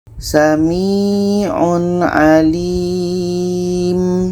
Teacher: Tanwin jelas, ain jelas, dan tidak ada dengung. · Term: izhar halki